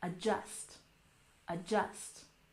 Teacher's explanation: Emphasize the second syllable.